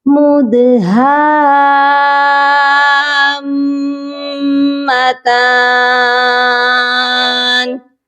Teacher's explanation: جب ہم یہاں وقف کریں گے تو نون کو ساکن کریں گے، یہ پڑھا جائے گا مدہام متان۔